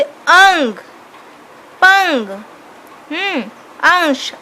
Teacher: अनुस्वर के उच्चारण में नाक से सांस अधिक निकलती है, मुंह से कम निकल रहा है